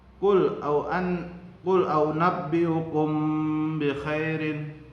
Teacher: Cara membacanya adalah merapatkan 2 bibir atas dan bawah sebelah dalam, samar-samar di bibir dan didengungkan. Panjang bacaannya 1 alif 2 harokat. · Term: ikhfa safawi